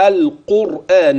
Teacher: القاف مفخمه والراء مفخمه مع انها ساكنه